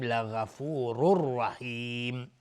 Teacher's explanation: رحیم مد عارض للسکون به مقدار 2 یا 4 یا 6 حرکت میتونیم مد بدیم · تنوین بعدش را ادغام بدون غنه